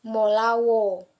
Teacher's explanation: Misalnya dalam kata molao, vokal o diucapkan dengan durasi yang lebih lama. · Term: durasi vokal yang panjang